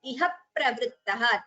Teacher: There is a dvitvam again there. Iha pravrittaha. Two p's. P is heard before the pravrittaha.